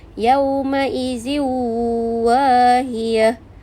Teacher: Jadi tanwin tu dimasukkan ke dalam bunyi waw dan dengung 2 harakat. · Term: idgham ma'al gunnah